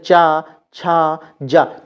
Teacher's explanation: प्राण वायु जो है वह रगड़ खाती हुई निकलती है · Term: स्पर्श संघर्षी